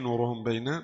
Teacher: Dengan ghunah dua harakat. Mim bersukun disamar pada huruf ba berharakat kasrah dengan ghunah dua harakat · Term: ikhfa syafawi